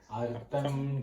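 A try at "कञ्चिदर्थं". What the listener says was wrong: You have to say it together. See, Artham you cannot split. Asampadayatah asampadayatah kanchidartham jati kriya gunaihi. Asampadayatah kanchidartham jati kriya gunaihi. Asampadayatah kanchidartham jati kriya gunaihi.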